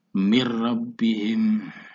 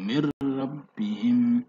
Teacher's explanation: Contoh ra, mir rabbihim, ada nun sukun di sini, nun ini disukun, memasukkan suara mim ke dalam suara ra, seolah-olah nunnya ini tidak ada, tetapi dibaca 1 kedukan, tidak boleh dipanjangkan, mir, tidak boleh, langsung mir rabbihim. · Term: idgham bila ghunah